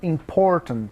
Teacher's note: A palavra important, o acento é no por, important.